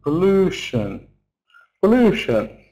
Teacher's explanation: Then the second syllable is long because it's stressed.